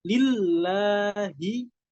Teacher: Kemudian lamnya disuruh ada tasdid lagi. Lillahi. Harus diberikan nabroh, harus diberikan tekanan. Lillahi. Haknya juga harus jelas.